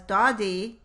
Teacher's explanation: the g phoneme changes from velar to alveolar, the d phoneme, to match the d that occurs earlier in the word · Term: alveolar assimilation